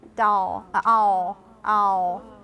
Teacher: I feel that my oo is kind of merged with my dark L.